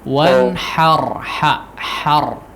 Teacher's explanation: pakai hak kecil ya, bukan hak yang besar